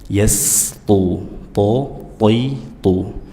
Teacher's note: tidak boleh ada aliran nafas pada huruf to karena dia tidak punya sifat hams, ya, dia bersifat jahar dan juga syiddah.